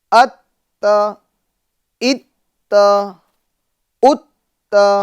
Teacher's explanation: تو مشدد حرف کو ہمیں 2 مرتبہ پڑھنا ہے اور تھوڑا رک کر پڑھنا ہے, جلدی نہیں پڑھنا ہے. اچھا اس میں بھی میرے ایف جے این چینل کے ناظرین, اس میں بھی ہمیں اس بات کا خیال رکھنا ہے اور ہر جگہ اس بات کا خیال رکھنا ہے کہ حرکت کو ہمیں کھینچنا نہیں ہے.